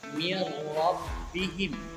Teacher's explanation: idgham bilaguna dia meleburkan tapi tidak dengung, artinya tidak dibaca panjang.